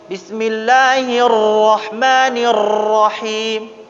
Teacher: 3 kali tempelan bergetar ya. Tidak boleh banyak. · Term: tafkhim